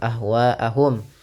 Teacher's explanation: Wa dipanjangkan empat atau lima harakat dan tidak boleh dikurangi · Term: mad wajib muttasil